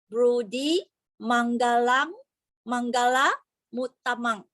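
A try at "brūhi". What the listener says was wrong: Did you say broody or bruhi?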